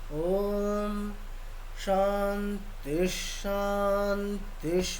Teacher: আর যেহেতু দেখুন প্রথম দুটির ক্ষেত্রে মানে তয়ের নিচে, তয়ের হস্যির নিচে দাগ আছে, তাই জন্য আমরা আমাদের মানে কণ্ঠটা নিচের দিকে বলতে, মানে স্কেলটা নিচের দিকে করতে হবে। ওম শান্তি শান্তি, পরেরটাতে উপরে শান্তি উপরে।